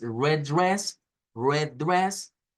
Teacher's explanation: esta es la e del inglés que es la e abierta